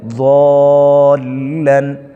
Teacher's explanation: اب یہ حروف مدہ کے بعد شد آئی ہے، تو اس کی ادائیگی میں تھوڑی دیر رکا جائے گا